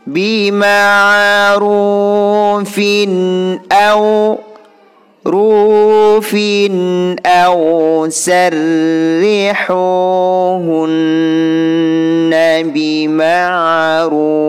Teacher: Di sini ra-nya berharkat dhammah. Ini hukum bacaan ra yang harus dibaca tebal.